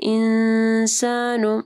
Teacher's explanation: یہاں پہ نون ساکن کے بعد سین ہے، اخفا غنہ ہوگا۔